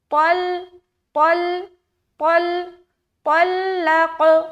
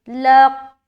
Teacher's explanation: قلقلہ کہتے ہیں ٹکرانے کو یا مل کر جدا ہونے کو قلقلہ کہا جاتا ہے۔ جیسے کہ لام کو جب ہم قاف سے ملائیں گے اور جدا کریں گے تو وہ قلقلہ والی جو صفت ہے وہ پیدا ہوتی ہے